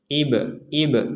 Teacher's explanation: pantulan itu sekedar pantulan tidak sampai ke e